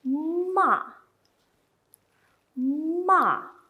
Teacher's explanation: This one, the tone is like falling down from a very, you can imagine, you just fall down from somewhere very high to low. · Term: fourth tone